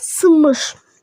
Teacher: Söz ortasında n samiti, m samitindən əvvəl gəldikdə m kimi tələffüz olunur.